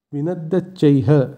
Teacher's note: শব্দের শেষে বিসর্গ থাকলে সেই বিসর্গের জায়গায় হয়ের উচ্চারণ হয় সংস্কৃতে, তাই এক্ষেত্রে শব্দটির উচ্চারণ হবে বিনদ্যচ্চৈ, তার সাথে হ, বিনদ্যচ্চৈহ।